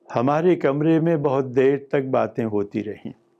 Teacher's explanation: I said it in one tone, with one tone unit.